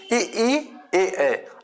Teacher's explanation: ई, ए, आप बोल के देखेंगे तो ये जिह्वा के अगले स्थान से बोले जाते हैं। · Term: अग्र स्वर